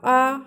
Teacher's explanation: हमारे ओंठों की स्थिति गोलाकार नहीं आई, यानी कि यह गोल सर्कल की तरह नहीं हुए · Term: आवृतमुखी स्वर